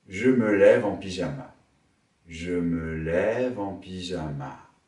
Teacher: Monter sur lève, descendre sur pyjama.